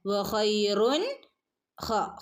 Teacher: ഹ തൊണ്ടയുടെ അക്ഷരമാണ് കേട്ടോ. പ്രത്യേകം ശ്രദ്ധിക്കണം തൊണ്ടയുടെ അക്ഷരങ്ങൾ.